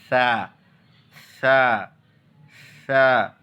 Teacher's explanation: ज़बान की नोक, ऊपर के सामने वाले दांतों की नोक, दोनों को लगा करके, दोनों को जम करके सा को अदा करना होगा।